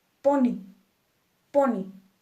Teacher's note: Pony dos sílabas po Ni esta palabra termina en y y nuestra sílaba tónica es po por lo tanto acentuamos po ni